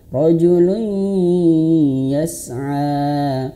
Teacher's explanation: tanwin seperti ini, an, in, un berjumpa dengan huruf ya seperti ini, maka masuk ke huruf ya dan ingat wajib masuk hidung